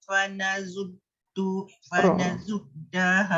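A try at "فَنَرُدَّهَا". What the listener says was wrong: Yang titik tu nun punya, yang ra tu tak dititik. Fanaruddaha.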